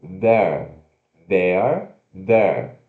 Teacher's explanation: Mas, quando a gente está falando rapidinho, a gente pode tirar esse E também, né? Então, ó, unstressed, temos TH vozeado, schwa, R